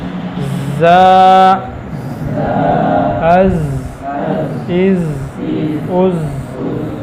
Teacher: زا کا مخرج زبان کی نوک ثنایا سفلا اور پھر کچھ اتصال ثنایا علیہ کا. زا، از، از، از، یہ حروف صفیریہ میں سے ہے.